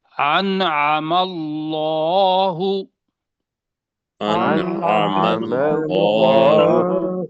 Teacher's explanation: ہاں اب دیکھیں نون اندر ہی آ گیا ہوا ہے اور آگے ہے عین، تو نون ظاہر ہوگا